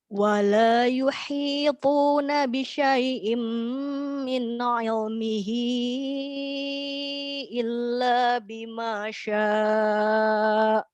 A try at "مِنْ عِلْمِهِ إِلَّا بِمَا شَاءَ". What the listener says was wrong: Oke, pada kata min ilmihi, nunnya jangan dipantulkan. Min ilmihi.